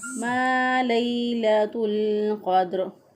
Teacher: लाम ज़बर या लई, इसको नरमी से, आसानी से, जल्दी से पढ़ेंगे, लंबा नहीं करेंगे।